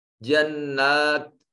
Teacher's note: اظہار شفوی ہوگا۔ جنات نون کے اوپر الف المدیہ الصغیرہ اور یہ نون مشدد ہے، غنہ واجب ہوگا